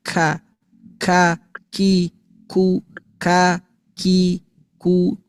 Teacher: keluar dari pangkal lidah nih. Ya, menyentuh langit-langit lunak. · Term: huruf kaf